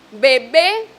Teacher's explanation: en la pronunciación de la segunda B, mi boca ya está abierta porque vengo de pronunciar una vocal y por lo tanto va a tener otro tipo de características, ¿sí?, en el momento de pronunciarla.